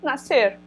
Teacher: A gente escuta, né, a gente não escuta o S separado, a gente escuta os dois juntinhos. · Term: dígrafo